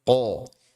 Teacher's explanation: Qo tebal jangan sampai dia seperti imalah ya, seperti qe qe